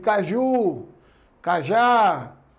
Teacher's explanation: São palavras oxítonas. Por quê? Porque a sílaba mais forte é a última.